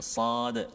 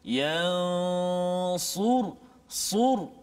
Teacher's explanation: hujung lidah kita diletakkan pada bahagian belakang gigi bawah kita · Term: huruf sad